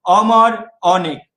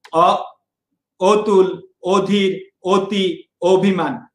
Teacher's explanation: তোমরা যদি নিজে নিজে ব্যক্তিগত ভাবে উচ্চারণ করো যে অমর অনেক, এখানে অ কিন্তু অ এর মতো উচ্চারণ হচ্ছে, অ কিন্তু ও এর মতো উচ্চারণ হচ্ছে না, তাহলে অ যেখানে অ এর মতো উচ্চারণ হবে সেটাকে আমরা বলবো বিবৃত বা স্বাভাবিক, আর অটা যদি ও এর মতো উচ্চারণ হয় সেটাকে আমরা বলবো সংবৃত